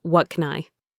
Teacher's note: The words are linked. But wait, the can is a function word and it's unstressed. So the A sound reduces to a schwa. It becomes KN.